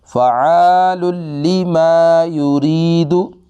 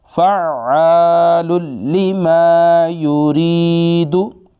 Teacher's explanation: ये तो ऐसे पढ़ा जैसे फ़ा पे ज़बर, आइन पे ज़बर है, शद तो पढ़ी नहीं गई, ये गलत तरीका है। इसको पढ़ेंगे फ़अालु लिमा युरीदु।